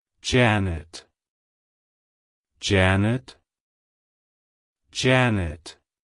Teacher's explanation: to pronounce it correctly emphasize the first syllable J ah and then the second syllable nit like hello Janet